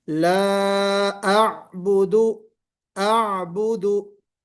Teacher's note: तो पहले हमजा की आवाज आएगी फिर आइन की।